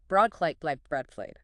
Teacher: The B stop needs that full lip closure, then a quick release. The B adds the L sound right after the B.